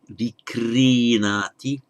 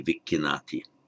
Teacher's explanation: by normal phonetic mutation, a kr becomes a double k in Pali